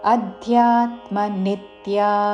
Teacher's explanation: ఈ పదములో ఆ మీద ధ్యా మీద నీ మీద ఆఘాత